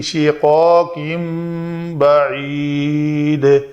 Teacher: شقاق کن تھا، کن کی نون کو میں نے میم سے بدلا، تو گویا یہ تنوین کے بعد با آ رہا ہے تو ہم اس نون کو میم سے بدل کر پڑھیں گے